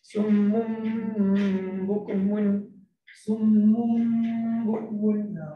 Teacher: kena ada dengung lah. Dengung dua rakaat kan.